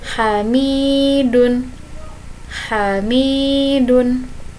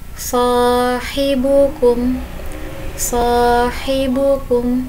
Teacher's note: Kemudian yang huruf H. Yang huruf H sifatnya samar-samar, kemudian halus, turun, terbuka, dan menahan.